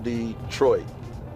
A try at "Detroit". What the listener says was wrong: that accent is on the 2nd syllable.